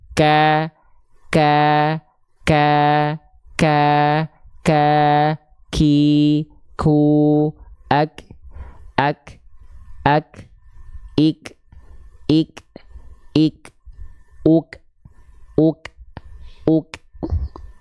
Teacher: Cuman bedanya kalau kaf dia keluar nafas, ada sifat yang namanya hams.